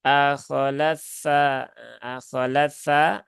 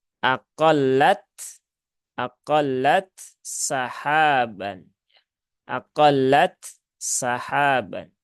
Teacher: Maka tidak bisa dibaca dengan akholatsa, akholatsa, nggak bisa seperti itu ya. Maka harus ditunaikan ya sifat hamas dari ta, kemudian sifat siddahnya juga, kemudian sinnya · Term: izhar